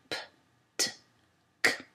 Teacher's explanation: Pour ces consonnes, les cordes vocales ne vibrent pas. Le son P est une occlusive labiale non voisée, c'est-à-dire qu'elle est produite avec les 2 lèvres qui rentrent en contact et sans que les cordes vocales ne vibrent. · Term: occlusives non voisées